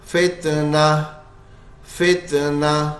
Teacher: گول تا ہے آخر میں, وہ گول ہا ساکن سے بدل جائے گا. فتنتن تھا یہ, لیکن وقف کریں گے تو فتنہ, فتنہ, بس ایسے ہو جائے گا.